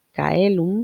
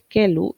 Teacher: el diptongo que se va a simplificar es el de AE, que se vuelve E